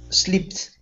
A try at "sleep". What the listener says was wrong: Almost. So you're adding an extra sound. You're saying sleeped. Okay, end right on the P. Sleep.